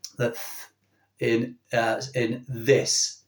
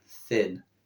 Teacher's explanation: So we've got the voiced version of this sound, that in this. Okay, and we've got the unvoiced, which is in words like thin.